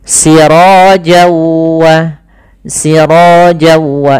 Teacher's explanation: cara membacanya langkah pertama namanya awalnya siroan ketemu dengan wau tanwinnya awalnya bunyi n nah kemudian ketemu wau maka n-nya hilang masuk ke wau jadi waunya double sirowwa sirojawa itu langkah pertama Langkah kedua ditahan gunahnya tahan suara · ketemu waw, maka n-nya hilang, masuk ke waw, jadi waw-nya double. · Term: Idgham disertai dengan gunah, idgham bi gunnah